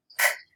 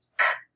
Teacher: I'm pushing air, but no vibration. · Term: voiceless sounds